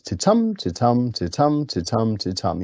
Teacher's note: five unstressed then stressed syllables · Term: iambic pentameter